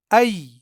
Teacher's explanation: यहाँ ये या हरफे लीन है क्योंकि यहाँ जबर के बाद या साकिन है, यानी इस या को यहाँ नरमी के साथ पढ़ना है